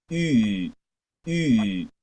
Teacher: Es una I redonda. La I redonda es igual que la I nuestra, pero esa I es I.